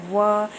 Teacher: व जो है वह दांत और ओंठ की सहायता से ही बोला जाता है। बोल के देख लीजिए व, इसमें ओंठ भी आप दोनों जुड़ेंगे और दांत भी टच करेगा, इसलिए इसको दंतस्थ व्यंजन बोलते हैं। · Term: दंतोष्ठ